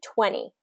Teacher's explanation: you'll probably hear a lot of native speakers kind of drop that T sound